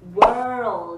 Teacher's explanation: 很多同学在读这个单词的时候，容易把中间的▁dark▁L▁给省略掉，读成▁word，▁这样是不对的 。我们在练习的时候，一定要把这个▁dark▁L▁把它给发出来。我们可以怎么样来练习呢？先发▁word▁的这个音▁word，▁这个时候你的舌头是卷起来的▁word，▁然后呢，再发▁O